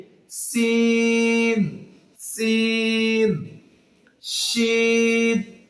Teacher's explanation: যেহুবার আগা সামনে নিচে দুই দাঁতের পেট এবং আগার সঙ্গে মিলে হবে সিন সিন সিন এ হরফটি জিহবার মাঝখান তার বরাবর উপরের তালুর